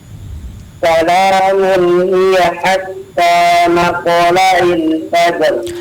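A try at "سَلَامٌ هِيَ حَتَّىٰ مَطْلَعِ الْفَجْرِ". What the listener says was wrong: Iya, diperjelas ainnya ya. Matlai. Sudah sangat baik ya.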